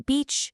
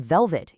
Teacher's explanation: The sound in beach, you use two lips. The sound of velvet, you use your top teeth and your bottom lip.